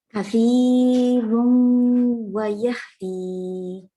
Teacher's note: Okay, so what you are doing actually is you are anticipating the wow and you are already rounding the lips in kathiran